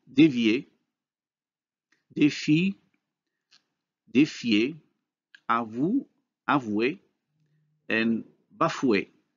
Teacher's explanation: a high vowel converts to the corresponding glide. If this high vowel is followed by another vowel, this is a case of major class change.